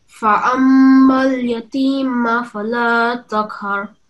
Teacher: This is a meme mushaddad. So the meme sound, the m sound, will be for 2 seconds.